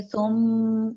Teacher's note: یہ غنہ ہو رہا ہے، ہم میم کی ساؤنڈ ناک میں سے نکال رہے ہیں